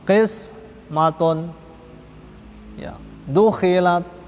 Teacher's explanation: apabila huruf isti'la berharokat kasroh, itu juga dibaca tebal